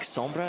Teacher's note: you have that little bit of a rolled r in there